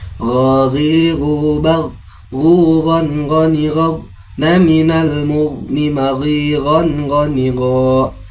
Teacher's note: ghain tidak memiliki sifat qalqalah. Jangan sampai terpantulkan ketika kita membacanya dalam kondisi sukun.